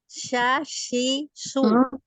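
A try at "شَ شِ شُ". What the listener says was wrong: Belum ya, belum sempurna. Sya, gitu. Tengah lidah. Naikkan tengah lidahnya, coba. Naikkan. Tengah lidahnya naikkan ke langit-langit. Sya. Tidak ada ya. Tidak ada huruf ya di tengah-tengahnya. Sya, jangan sya.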